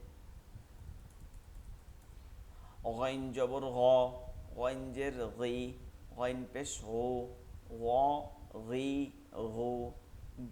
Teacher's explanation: নরম আওয়াজে পড়তে হবে, হলকের শেষ থেকে। গইন এবং খ হলকের শেষ থেকে।